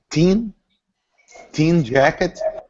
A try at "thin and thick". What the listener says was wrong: Be careful of the pronunciation of the TH. Stick out your tongue. Don't be shy. Thin and thick.